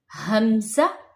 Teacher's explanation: हरूफे हल्की यानी हलक से अदा होने वाले हरूफ, हमज़ा, ये हलक के सबसे निचले हिस्से से अदा होता है। हमज़ा यानी सीने से।